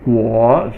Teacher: fourth tone falling tone